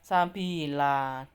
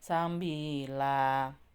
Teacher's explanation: Ketika ada fathah tanwin di akhir ayat maka dibaca sabila, difathahkan panjang, tidak tanwin, tidak sabilan gitu ya, tapi sabila. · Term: mat iwat